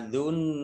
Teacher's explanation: Nun tasdid dibaca gunnah atau mendengung, ditahan 2 harokat